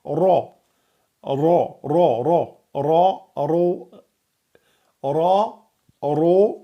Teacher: Le ra et le ro emphatique, on gonfle l'arrière de la langue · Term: ra emphatique